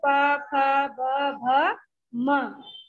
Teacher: तो उ उ प वर्ग वाले पूरे देखिए, प फ ब भ म आदि ओठ से बोले जाते हैं, इसलिए इन्हें ओष्ठ कहते हैं। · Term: ओष्ठ व्यंजन